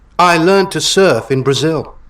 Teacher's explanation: that was British, especially the way he said learned without the re sound